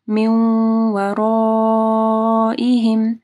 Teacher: نون ساکن کے بعد واو ہے، ادغام آ رہا ہے غنہ کے ساتھ، ٹھیک ہے. را موٹی پڑی جائے گی، مد ہے، اس کے بعد حمزہ ہے، تو 4 سے 5 حرکات کے برابر اس کو لمبا کرنا ہے.